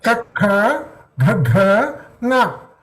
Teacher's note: The tongue position remains the same. The throat, the sound is originating from the throat, so it is called as kanta or guttural.